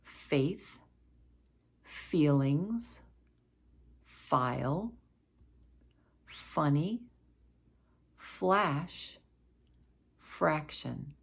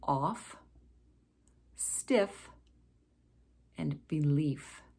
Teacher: we form this sound by placing our top front two teeth against our lower lip and then blowing out without using our voice and this f sound can occur at the beginning middle or